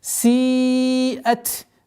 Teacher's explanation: Зульфатан сиат, долгота в размере четырех огласовок, удлинение кесры